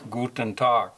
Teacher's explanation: If a word ends in G, it has the sound of a K, sort of as in Tag, guten Tag. It's closer to a K, I think, than a G.